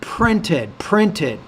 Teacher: you have to pronounce the pee with a lot more air